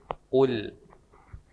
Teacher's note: Nah, satu lagi di kul itu pakai huruf ko, bukan pakai huruf ka. Jadi tidak ada keluar angin